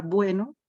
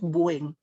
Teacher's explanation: En este caso, hemos perdido solo la vocal de la última sílaba. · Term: apócope